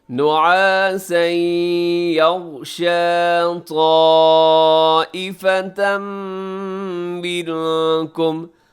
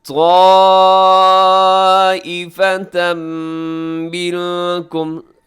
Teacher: نعاسا یغشا طائفة منکم، طائفہ یہاں جو مد ہے، مد متصل واجب، اسے ضرور یہاں پہ لمبا کیجیے گا۔ طائفة منکم، اور طائفتن پہ تنوین کے بعد میم ہے، ادغام ہوگا، منکم میں اخفا ہوگا۔